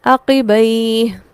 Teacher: مد عارض لین، جس میں قصر اولا ہے